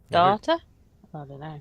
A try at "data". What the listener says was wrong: Data. doesn't pronounce T's. It's data.